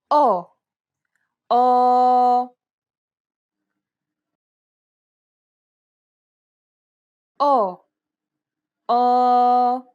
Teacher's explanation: The sound is similar to the O sound in the word pot, though try to open and round your mouth more than you would normally.